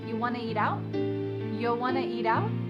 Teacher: we have reduced want to to become wanna